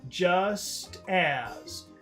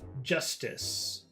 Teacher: the first difference is the length the duration of the vowel sounds two long vowel sounds